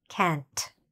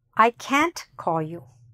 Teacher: There should be a difference when you say can and can't. It's really important to say that last t sound